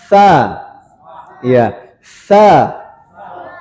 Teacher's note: Kemudian tsa nah tsa ya ujung lidah berarti tsa ujung lidah masih ujung lidah ujung lidah dia menyentuh ujung gigi seri sini ujung gigi seri atas